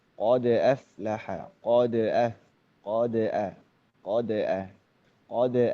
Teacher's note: Huruf dal sukun memang ada sifat apa? Qalqalah ya, atau memantul gitu kan ya.